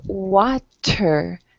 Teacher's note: like to challenge you to pronounce your t a bit harder your t sounds a bit like a d